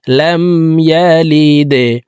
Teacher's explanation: লাম দাল জেরে লিদে, লাম ইয়ালিদে। দাল কলকলার হরফ নিচের দিকে ধাবিত করে ধাক্কা দিয়ে উচ্চারণ করতে হবে।